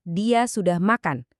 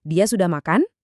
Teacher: Ngerasa kan nada suara kita naik di akhir? Nah, itulah suprasegmental lagi bekerja.